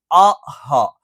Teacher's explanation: തൊണ്ടയുടെ താഴ്ഭാഗത്ത് നിന്നാണ് അംസ് ഹ, അ ഹ. ഈ പറയുന്ന 2 ഉച്ചാരണങ്ങൾ തൊണ്ടയുടെ താഴ്ഭാഗത്ത് നിന്നാണ് വരുന്നത്